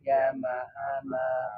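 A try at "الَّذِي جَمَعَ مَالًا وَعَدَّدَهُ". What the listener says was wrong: jama'a malau. Launya belum. Alladzi jama'a malau wa addadah. Wa addadah. Wa addadah. Ya, jadi harus ada haknya ya. Jadi jangan sampai dia punya sifat khofa, nggak jelas, harus diperjelaskan ya.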